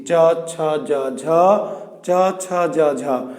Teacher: এই যে আমাদের জিহ্বাটা উঠে গিয়ে যখন চ ছ বলছি, চ ছ জ ঝ, চ ছ জ ঝ, তখন তালুতে স্পর্শ করছে। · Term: তালব্য